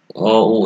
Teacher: এই স্বরধ্বনিগুলা অ, ও, এগুলো উচ্চারণের সময় জিহ্বা তোমরা খেয়াল করবে যে পেছনের দিকে সরে যায়, এই জন্য এই স্বরধ্বনিগুলোকে বলা হয় পশ্চাৎ স্বরধ্বনি